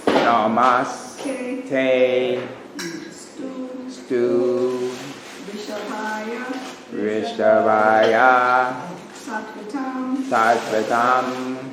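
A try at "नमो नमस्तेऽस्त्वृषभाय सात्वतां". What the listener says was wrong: And that's Stu and Rishabhaya is going to be tricky, but the Stu is a V and the R with a dot under it is a vowel. So Rishabhaya, like that, Rishabhaya. Namo Namaste Rishabhaya Sattvatam. Namo Namaste Rishabhaya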